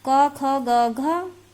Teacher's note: का वर्ग का उच्चारण स्थान कंठ